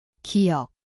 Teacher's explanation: Ia berbunyi seperti G garis miring K. Tempatnya adalah belakang lidah.